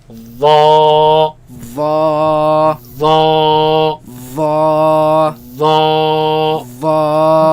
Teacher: Okay, comes from the same place as val and fa, meaning the front flat part of the tongue against the edge of the upper teeth, right? And it is heavy. That means the back of the tongue is raised, and it is soft. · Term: heavy letter